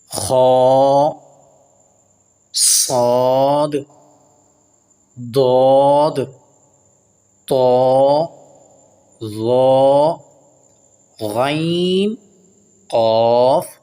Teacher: 7 حروف ایسے ہیں جن کو ہمیشہ پر یعنی موٹا کر کے پڑھا جاتا ہے، اور وہ 7 حروف یہ ہیں: خا، صاد، ضاد طا ظا غین قاف، ان کو کہتے ہیں حروف مستعالیہ۔